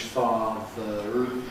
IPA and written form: ˈfɑːðər (father)